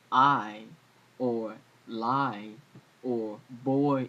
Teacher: it's basically two vowels that float into each other almost a Glide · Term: diff thong